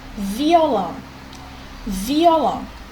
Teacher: aqui eu tinha 2 vogais que estavam juntas, um encontro vocálico, mas que estão em sílabas diferentes. Então, aqui eu tenho um hiato.